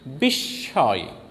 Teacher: শব্দের মাঝখানে ম ফলা থাকলে ম ফলার উচ্চারণ হয় না, বরং ম ফলাযুক্ত ব্যঞ্জনটি দ্বিত্ব উচ্চারণ হয়।